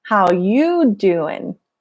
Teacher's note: you goes up and doing, the G disappears.